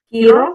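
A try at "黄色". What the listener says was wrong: Kiiro. Kiiro. Jangan kiro. Beda. Kiiro. Ki dan iro. Kiiro.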